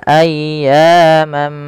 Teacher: Kemudian pada lafal ayyamam, ayya di sini panjangkan suara ya-nya sepanjang 2 harakat karena ia mad tabi'i dan tekan ya-nya dulu. Kemudian ma'dudah, ada tanwin bertemu dengan huruf mim.